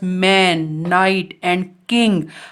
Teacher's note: Second position में if the soft palate is lowered, जब soft palate नीचे की तरफ है, the oral passage is closed, उस समय ओरल पैसेज क्लोज हो जाता है एंड the air passes through the nasal cavity, और एयर हमारे नेजल कैविटी के थ्रू बाहर आती है. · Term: नेजल साउंड